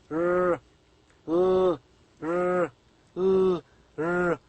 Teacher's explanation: the front part of the tongue and the alveolar ridge are responsible to produce these sounds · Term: alveolars